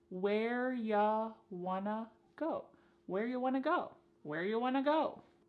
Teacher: You becomes ya, and want to becomes wanna. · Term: reduction